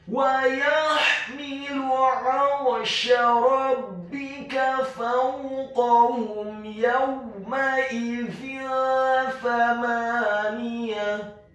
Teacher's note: huruf ta marbutahnya diubah menjadi huruf ha yang tafkhim, yang tebal dan dibaca sukun